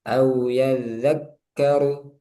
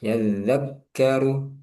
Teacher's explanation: Nah, disukun dulu kafnya baru ka. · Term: tasdid